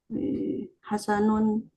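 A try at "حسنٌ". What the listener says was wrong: Sahih Hasanun. Bitanwin.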